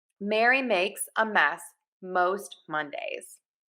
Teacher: all of the air moves out of your nose for these sounds · M, your lips are closed.